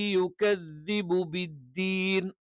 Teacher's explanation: അപ്പോ നാവിന്റെ മുകൾ ഭാഗത്തിന്റെ അറ്റം മേൽവരിയിലെ രണ്ട് മുൻകല്ലുകളുടെ മോണയോട് ചേരുന്ന ഭാഗത്ത് അഥവാ നാവിന്റെ അറ്റം അല്ലെങ്കിൽ അറ്റത്തിന്റെ മുകൾ ഭാഗം അതിന്റെ മോണയിൽ അഥവാ മുൻപല്ലുകളുടെ മോണയിൽ വെച്ചിട്ടാണ് നമ്മൾ ദ എന്നുള്ളത് ഉച്ചരിക്കുന്നത്. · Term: ദാലിന്റെ മഖ്റജ്